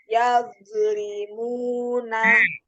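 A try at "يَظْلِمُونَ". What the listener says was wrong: Ini makhraj nya masih salah nih. Zo. Iya, jadi bibir bawahnya itu jangan nempel di dua gigi seri. Zo, zo. Zo, zi.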